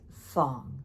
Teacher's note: That low falling fong.